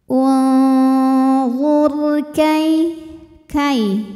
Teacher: Huruf ra sukun dibaca secara tafkhim karena huruf sebelumnya berharokat dhammah, maka ra-nya dibunyikan dengan tebal